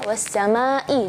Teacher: perhatikan Hamzah di kalimat assama ya harus jelas